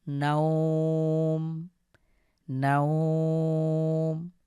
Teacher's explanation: আমরা সুকুন পড়ব এবং লিনের হরফটাকে এক আলিফ টেনে পড়ব।